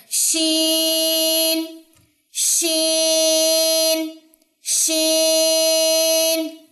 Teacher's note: شین میں آواز پھیلتی ہے، یہ بھی 3 حرفی ہے، آخر تک آپ کو نون کی ساؤنڈ محسوس ہونی چاہیے